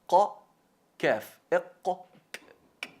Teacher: elevando el fondo de la lengua hacia el paladar, ligeramente por encima del qaf, justo por encima del qaf, qa, kaf, ahí un pelín arriba.